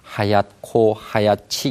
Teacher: 그래서 뭐 하얗고 하얗지 이런 경우에 뒤에 나오는 자음이 이제 거센소리로 바뀌니까 히읗 발음이 있다는 것이 분명하거든요